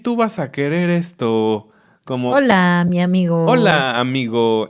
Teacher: las personas de la Ciudad de México, como nosotros, tienen un tono cantadito